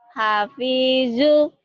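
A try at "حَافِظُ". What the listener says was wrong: Ya, Ibu yakin ini zu? Ini tok, Bu. tok, Bu. Ini kan rumahnya tok, Bu. Jadi tok. Jadi gimana dibacanya? Kok panjang? Hafizu. Ini to, ini zo. Yang bertitik zo. Nggak ada titik to.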